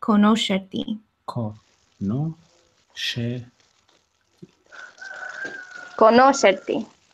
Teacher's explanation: the syllable stress here is on the syllable no